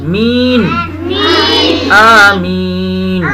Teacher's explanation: می کے بعد نا نون کی آواز آنی چاہیے